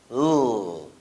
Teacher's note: It's called lateral because the tip of the tongue is placed on the alveolar ridge, and air escapes through the mouth laterally along both sides of the tongue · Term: lateral sound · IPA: /l/